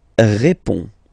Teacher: final D is not pronounced. You only have this on nasal sound at the end.